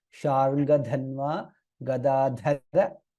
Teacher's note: Sharngadhanva, it is Sharngadhanva, Dha Mahaprana, Sharngadhanva, Gadadhara, Dha again is Mahaprana